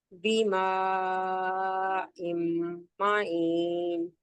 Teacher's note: بماء معين معین میم مشدد ہے نا یہاں بھی گننا ہوگا میم مشدد پہ گننا ہوتا ہے